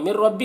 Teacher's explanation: नून को रा से मिलाकर बगैर गुन्ना के पढ़ेंगे। इसको इदगाम ताम कहते हैं।